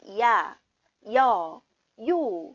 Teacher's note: 입술하고 혀가 하나의 모음을 발음하는 와중에 움직인단 말이에요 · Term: 이중 모음